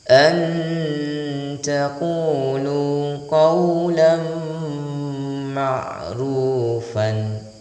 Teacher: Ikhfa berarti disamarkan dan memiliki interval persiapan penyebutan huruf setelahnya, yaitu huruf ta, jadi posisi lidah pada tarfil lisan, jadi tarfil lisan ma'a thanaya al-ulyah.